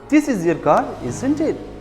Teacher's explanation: If we already know the answer, we use falling intonation, our tone of voice falls. · Your voice goes down when you say, isn't it?